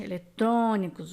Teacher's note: a vogal tônica em eletrônicos é fechado exatamente o próprio sinal já indica que o som fecha olha